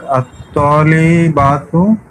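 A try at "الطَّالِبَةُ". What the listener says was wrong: হ্যাঁ, টান হবে না, হ্যাঁ বাতে টান দিলে বহু বচন হয়ে যাবে।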